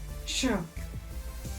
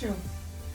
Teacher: जो मूर्धन्य श होता है ना, इसको बोलने में मूर्धा का प्रयोग होता है, श। ठीक है, श।